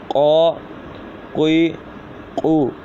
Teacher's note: قاف پڑھتے وقت خاص خیال رکھنا ہے کہ یہ زبان کی جڑ اور تالوں کے نرم حصے سے ادا ہوگا